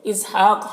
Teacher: ہا میں کھڑا زبر ہے، یہ الف مدہ کی طرح ہوتا ہے، اسے ایک الف کے برابر کھینچیں گے۔ قوف یہ حروف مستعلیہ میں سے، اسے پر پڑھیں گے۔